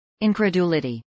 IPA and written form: ˌɪnkɹəˈdulɪdiː (incredulity)